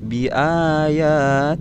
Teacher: ada huruf lafzul jalalah Allah yang didahului oleh huruf yang berharakat kasrah, maka hukum bacaannya dibaca tipis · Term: lam tarqiq